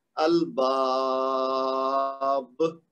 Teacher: البابو، تو اب با کے بعد الف مد ہے 2 حرکت، لیکن جب با کو ساکن کر دیں گے رکنے کی وجہ سے تو پھر کیا بنے گا، الباب، یہ مد عارض بن گیا۔